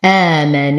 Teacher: نشد النون بغنة أكمل ما تكون، بعدها حرف مد طبيعي حركتين